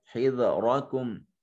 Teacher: حذرکم را مفتوح ہونے کی وجہ سے، اس کے اوپر زبر ہونے کی وجہ سے اس کو مفخم ادا کریں گے۔